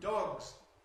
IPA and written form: dɒgz (dogs)